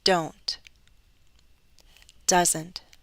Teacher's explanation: there's a true T but there's less of that puff